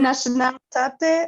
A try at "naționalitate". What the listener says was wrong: So you could say naționalitate, yeah? Don't ignore the ț, because there's a ț there. Naționalitate or cetățenie.